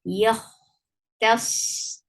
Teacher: Kha will get sifa of rakhawa, and it will be heavy.